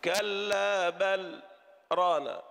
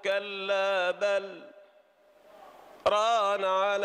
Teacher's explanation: نقف ولا نتنفس مدة تكون أقل بقليل من مدة الوقف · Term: السكت